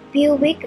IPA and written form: ˈbjuːɪk (Buick)